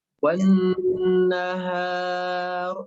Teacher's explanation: Ditahan dulu, nunnya 3 harokat, Bu.